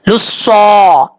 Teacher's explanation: सौद full मौत पढ़ा जाएगा, हुरूफ मुसालिया में से है, और जब तक जुबान ऊपर की तरफ नहीं उठेगी उस वक्त तक ये सौद सही तरीके से नहीं पढ़ा जाएगा, और सीटी के साथ पढ़ा जाएगा, हुरूफ सफीरिया में से भी है